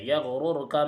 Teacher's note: یغررک میں دونوں را کو پر پڑھیں گے، اس لیے کہ ایک را پر پیش کی حرکت ہے اور دوسری را ساکنہ سے پہلے بھی پیش کی حرکت ہے، اس لیے یغررک میں دونوں را کو پر پڑھیں گے۔